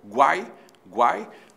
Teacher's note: o U é semivogal, o A é vogal, o I é semivogal, temos um tritongo